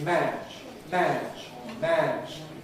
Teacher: in English the ʤ is not really voiced throughout. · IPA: mæʤ̥